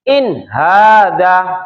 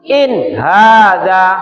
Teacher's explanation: ini nun mati yang dibaca terang atau jelas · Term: izh q